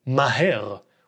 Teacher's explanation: The word starts with a mem with an unwritten a vowel, then a hey with an unwritten e vowel, and then a resh with no vowel. Classically, in careful speech in 1940, this would be maher, with an H sound for the hey.